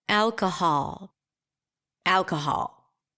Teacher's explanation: in this case, it's the 'aa' as in father.